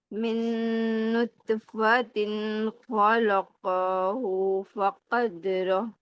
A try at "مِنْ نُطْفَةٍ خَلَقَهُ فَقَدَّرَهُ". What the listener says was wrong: من نطفہ. نطفہ طا جو ہے نا، تا نہیں بنا دینی اس کو، ٹھیک ہے، یہ طا ہے. من نطفة